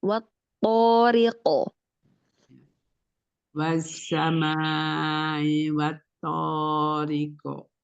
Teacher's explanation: qalqalah di akhir dia setengah harakat saja memantul ringan